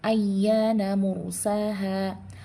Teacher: ada ro mati, ro sukun, sebelumnya berharokat dhammah, maka dia dibaca tafkhim atau dibaca tebal